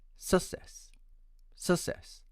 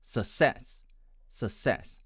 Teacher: my friends from india tend to pronounce it as success success with the stress on the first syllable and my american friends pronounce it as success success with the stress on the second syllable